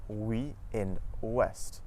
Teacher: OU at the start of the syllable makes a W sound